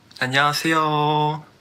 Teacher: Whenever he pronounces the consonant 시옷, that's the S letter, that letter sounds extra soft, which makes it almost sound like a TH sound. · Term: lisp